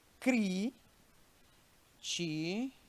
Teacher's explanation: sílabas tem uma que você bota mais força no pulmão né pronuncia de forma mais estourada é essa antepenúltima sílaba